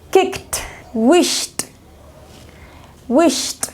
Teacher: The next sound is T. Este sonido es más sin la voz, sin las cuerdas vocales, es T. Entonces, este sonido se usa solamente cuando está en past simple, en pasado simple, en los verbos regulares, cuando hay una consonante que no usa las cuerdas vocales.